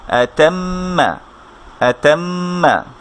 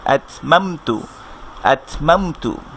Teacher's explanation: মনে রাখবো মিম সাকিন হলে কিন্তু গুন্না হবে না, মিম তাসদীদ হলে গুন্না হবে